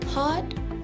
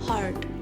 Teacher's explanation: the British English would not pronounce the letter R. However, for the American English, they would stress on the letter R. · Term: R omission